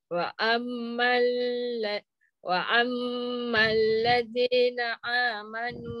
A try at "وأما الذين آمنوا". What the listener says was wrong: Ama, jangan jangan tekan. Hamzah tak boleh tekan. Ha, nanti dia jadi ain.